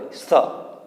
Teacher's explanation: અને દંત્ય સ, સસલાનો સ કે ને દંત્ય, તે દાંતની નજીક જીભનો સ્પર્શ થાય એ રીતે તેનું ઉચ્ચારણ કરવાનું હોય